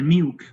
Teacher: Singapore English may pronounce milk, the dark L is not pronounced.